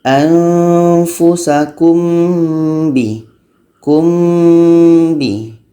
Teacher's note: Kebetulan mim dan ba ni adalah sama-sama huruf bibir, jadi kita mudah untuk melafazkannya.